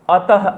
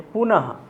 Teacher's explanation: यह ह की, हकार की उच्चारण होती है जिसको हम अह कहते हैं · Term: विसर्ग